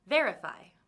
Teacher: the first syllable is the loudest one